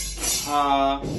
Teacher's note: আমাদের কণ্ঠনালীটা যখন উচ্চারণ করবো তখন পুরো খোলা ওপেন থাকবে এবং যখন আমরা হা উচ্চ করবো তখন আমাদের কন্ঠ একটু চিকন